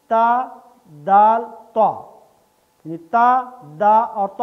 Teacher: तीनों का मखरज एक ही है, ज़बान की नोक को ऊपर के दांतों की जड़ से लगाइए। ये ज़बान की नोक समझ लें और ये दांत जहाँ पे दांत ख़त्म हो रहे हैं, मसूड़े ख़त्म हो रहे हैं, दांतों की जड़ से लगेगी तो इससे ये तीन हरूफ अदा होते हैं।